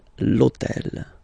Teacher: And third example, so I took on purpose this hôtel, okay, because it starts with H, but remember that in French we don't pronounce H, okay, so basically the first sound of the word is the vowel O, okay, so for the same reason, needs to disappear.